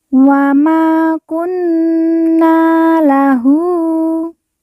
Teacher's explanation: Hu kita baca panjang dua harakat karena di atasnya terdapat harakat u terbalik